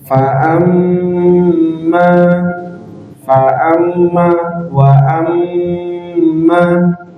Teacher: huruf nun tasdid dan mim tasydid nah itu perlu ditahan dua hingga tiga ketukan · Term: huruf ghunah